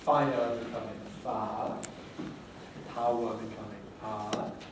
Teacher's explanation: Smoothing, which is the loss of the second element of the diphthong, so that I becomes ah, in fire becoming far, power becoming ah.